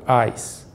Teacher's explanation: no plural, o alfa é breve, então o iota é pronunciado